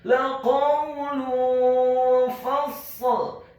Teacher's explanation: Apabila ada huruf nun yang sukun atau tanwin, dalam hal ini adalah huruf lam yang harokatnya adalah dhammah tanwin bertemu dengan huruf-huruf ikhfa, diantaranya adalah huruf fa, maka hukum bacaannya adalah dibaca secara samar-samar, ikhfa